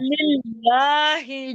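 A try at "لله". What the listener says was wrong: अब लिल्लाही का वक्फ करें। हाँ, लाम को थोड़ा खींचें।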